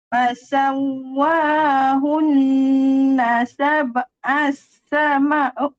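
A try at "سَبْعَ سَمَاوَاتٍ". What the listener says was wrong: Sab'a sama. Tidak panjang. Tidak panjang. Macam ni. Sab'a samawat. Satu-satu.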